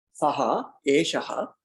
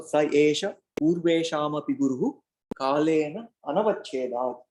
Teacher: Although you don't see the ha here because of sandhi rules, it's called a visarga lopa sandhi. The two dots, the visarga, the ha, the saha becomes sa, and eshaha becomes esha.